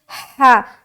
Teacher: जब हा को अदा करेंगे तो एक हवा की सी हलक से जाहिर होगी